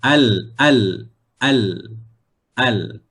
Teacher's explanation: Hujung lidah ini, hujung lidah kena pada bahagian gusi gigi atas hadapan. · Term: huruf Lam